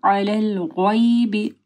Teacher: یا ساکن سے پہلے جو ہے غین کے اوپر زبر ہے، مد لین آ رہی ہے